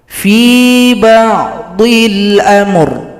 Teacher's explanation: ra disukunkan, berikan bunyi vokal.